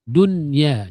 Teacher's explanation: Memang tak dengung. Tapi suara dengung dia akan keluar juga sebab itu adalah sifat kepada huruf nun.